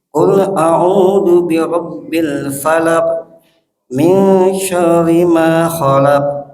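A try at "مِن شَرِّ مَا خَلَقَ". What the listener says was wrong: Kolkolahnya punten keluarin kolkolahnya. Khalaqo kolkolahnya mantul ya kopnya.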